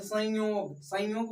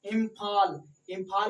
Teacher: जैसे संयोग बोलिएगा तो नाक से हवा निकलता है।